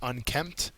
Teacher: The second syllable is accented.